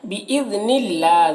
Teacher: باذن اللہ ذال کو باریک پڑھنا ہے اور اللہ کے لام کو یہاں پر باریک پڑھنا ہے